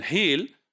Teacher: in heal, there is the backward movement of your tongue, right? So this heal, there is backward movement. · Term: retraction